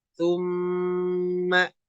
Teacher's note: Suma nah ini ditahannya dua harakat Kenapa karena ada tanda tasdid pada huruf mim ya huruf mim yang bertasdid ada hukum namanya gunah ya gunah